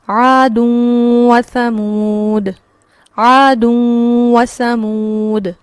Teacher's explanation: لیکن جب ہم قاعدہ پڑھ لیتے ہیں تو قاعدہ ہمیں اس قابل کر دیتا ہے کہ اگر اس پر تشدید نہیں بھی ہوگی تو ہمیں پتہ ہوگا کہ یہاں قاعدہ ہو رہا ہے، نہ صرف مجھے ملانا ہے بلکہ مجھے یہاں پر رک کر غنہ بھی کرنا ہے